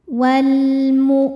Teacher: Hamzah ketika ditekan maka suaranya tertahan.